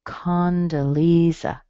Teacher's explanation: Lee is where your strong part is.